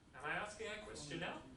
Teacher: Am I asking a question now? So my voice goes up. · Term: rising intonation